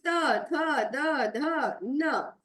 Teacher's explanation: दंत्य यानी कि जो दांतों से निकल के आ रहा है, जो हमारी जीभ दांतों के सामने जाके चिपक रहे हैं, वो हो गए हमारे त वर्ग, जैसे त, थ, द, ध, न।